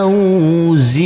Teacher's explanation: huruf nun kita baca panjang dengan panjang dua harakat apabila kita wakafkan ini juga dibaca panjang dengan panjang dua harakat